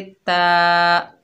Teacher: ता के ऊपर खड़ा ज़बर है, एक अलिफ की मिकदार खींचकर पढ़ेंगे।